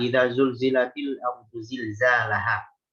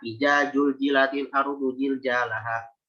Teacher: Di wastul lisan, di tengah lidah. Sementara zai, zal itu mainnya di ujung lidah udah.